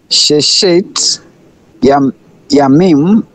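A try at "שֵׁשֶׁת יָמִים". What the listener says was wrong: Beautiful.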